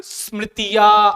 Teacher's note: अलाप की ध्वनि त्रिमात्रिक स्वर को द्योतित कर रहा है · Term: प्लुत